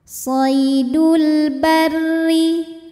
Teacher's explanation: menghadapi huruf qamariah yaitu ba lam sukun dibaca jelas shidul barri huruf ro dibunyikan secara tarqik karena berharakat kasrah maka rnya tipis